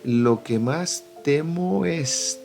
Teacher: Temo termina con O y es termina con E. Entonces aquí tenemos una sinalefa.